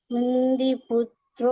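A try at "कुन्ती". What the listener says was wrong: Kundi no, Kunti. First ta.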